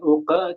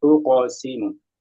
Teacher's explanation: Uqsimu, jangan uqa tapi uqsimu. Ditebalkan lagi qafnya.